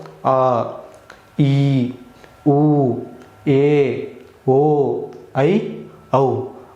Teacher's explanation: 2 ಮಾತ್ರಾ ಕಾಲಗಣದಲ್ಲಿ ಉಚ್ಚರಿಸಲ್ಪಡುವ ಅಕ್ಷರಗಳಿಗೆ ದೀರ್ಘ ಸ್ವರಗಳು ಅಂತ ಹೇಳಿ ಕರಿತೀವಿ